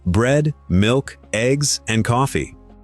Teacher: A list goes up, up, up, and then down on the last item.